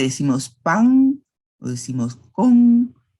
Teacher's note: el español guatemalteco se caracteriza por velarizar la N en posición final de palabra